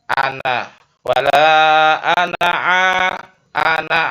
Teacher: Jadi setiap ana yang bermakna saya dalam bahasa Arab, kalau di wasol terus bacanya itu bahasanya pendek ya.